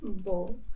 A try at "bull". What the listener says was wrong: You almost have to spit that U out. It's like a, it's not a ba, it's a bu, bu. It's, it feel, it feels funny to, like, your mouth feels kind of funny when you do it. It's a buh, bull, bull. It's, it takes a bit of practice to spit that U with the B, bull.